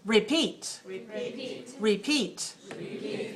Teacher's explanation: they're two syllables and you stress the second